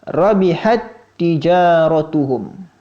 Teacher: huruf ta yang sukun yang pertama dimasukkan ke dalam huruf ta yang kedua yang kondisinya berharokat · Jika ada huruf pertama sukun, yang kedua berharokat, huruf pertama dimasukkan kepada huruf yang kedua, dibaca tanpa gunnah, yakni tidak boleh ditahan dengan gunnah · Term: idgham mutamatsilain